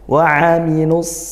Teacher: makhrajnya dari tengah tenggorokan ya Tengah tenggorokan